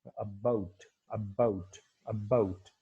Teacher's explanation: ब जो साउंड आ रही है उसमें वॉइसिंग बहुत ही वीक किस्म की वॉइसिंग आपको, या लिटिल वॉइसिंग आपको वहां पर क्या है, नजर आएगी। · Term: little voicing